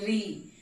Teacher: ली में जीभ हमारी दांत के पास छूती है